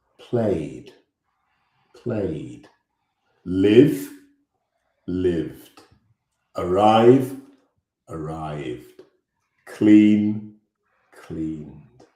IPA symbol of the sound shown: d